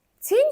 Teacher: T-dan sonra incə Y saiti gəlir. Deməli, biz avtomatik olaraq T-ni daha incə tələffüz etməliyik.